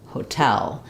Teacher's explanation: So for this one, we have often when we have the T in the middle of words, it's going to be a flap sound in English. But in hotel, the stress is on the second syllable. So the T functions like a T at the start. So what I would suggest for teaching your students is have them say the word tell first, and then add the ho sound back on.